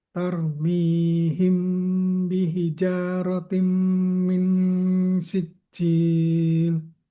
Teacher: Pertemuan mim sukun dengan ba ada dengung yang tidak boleh diputuskan